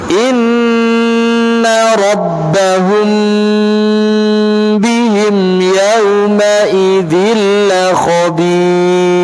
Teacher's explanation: Tetap memperhatikan gunnah, tidak boleh dibaca idhar